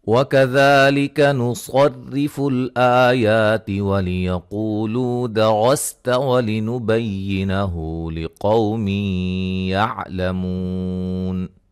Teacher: مد اصلی، صاد کو موٹا، را کو باریک پڑھیں گے